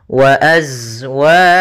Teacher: Pada lafal bacaan hum wa azwajuhum di sini ada mim mati bertemu dengan huruf waw, maka ini kita namakan dengan hukum tajwid berupa izhar syafawi. Maka suara mimnya harus dibaca dengan jelas, tidak boleh ditahan.